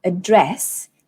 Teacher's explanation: address contains 2 syllables, address, and then dress is the one that you stress.